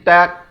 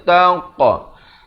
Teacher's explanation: bila pantulan pada huruf qaf, pastikan mulut itu dibulatkan, jangan pepeskan jadi tak. Tak betul, dia kena tangqa. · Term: khalkhalah sughra